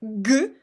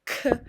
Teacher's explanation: Your position of your tongue is completely the same, but you just don't engage your vocal cords.